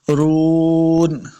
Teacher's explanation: را کو پور پڑھنا ہے. رون، را پیش واو واو مدہ ہے، اس کو 2 حرکات لمبا کر کے پڑھیں گے. آخر پہ نون کو ساکن کرنا ہے، وقف کریں گے.